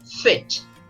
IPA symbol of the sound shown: ɪ